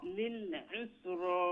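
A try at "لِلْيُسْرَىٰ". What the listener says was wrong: না উসরা না ইউস শুধু খুকা ইউস রা ইউস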